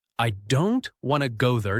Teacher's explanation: Now the smaller words like I to and there are said more softly or quickly. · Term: rhythm